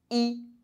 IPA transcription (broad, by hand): i